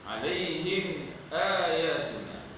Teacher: Ayatuna asalnya ayatuna, ditukarkan hamzah menjadi alif. Ini adalah mad ma'badal dua harakat.